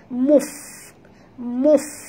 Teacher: Muf di sini fa adalah hamas. Jadi ketap gigi atas ke bibir bawah.